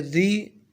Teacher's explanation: را کے نیچے زیر آئی ہے تو اس کو ہم باریک کر کے پڑھیں گے